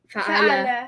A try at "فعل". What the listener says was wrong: No, look, fa should be long. Fa'ala is the shape, yeah?